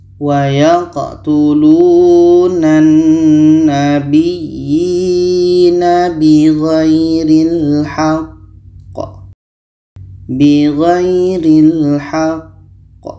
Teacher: Maka ketika qa mati diiringi tasydid itu hukumnya qalqalah akbar. Cara bacanya kita berhenti 2 detik lebih kurang, setelah itu baru pantulkan.